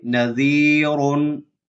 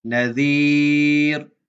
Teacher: تو را جب ساکن ہوگا تو را ساکن سے پہلے یہ جو یا ہے یہ یا ساکنہ ہے. تو وقف کرنے کی وجہ سے را جب ساکن بنے گا تو را ساکن سے پہلے جب یا ساکنہ آئے گی تو یہاں پہ را باریک پڑا جائے گا